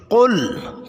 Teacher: قاف زبان کی جڑ اور لحات موٹا کر کے پڑھیں گے